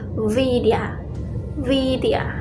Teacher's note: Jadi masih nyerempet V banget enggak, W banget juga enggak. Kalau V banget kan jadi Vidya gitu kan.